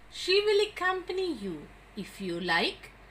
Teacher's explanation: That is said to be an afterthought. So whenever terminal tone group is intended as an afterthought, it has a rising tone